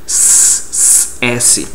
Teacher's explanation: quando eu pronuncio do S, a língua não está tocando nos dentes. A língua está atrás.